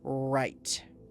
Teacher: Tongue touching nothing. Sound from the back.